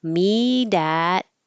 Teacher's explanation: This changes to a D, me dat. And this T and T next to each other means you won't hear the first one